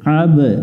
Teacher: আ মিলবে বায়ের সাথে আব, এখানে আইন অক্ষর আছে গলা চেপে উচ্চারণ করতে হবে, বা অক্ষরের উপরে সুকুন থাকলে কলকলা করতে হয়, অর্থাৎ প্রতিধ্বনি সৃষ্টি করতে হয়।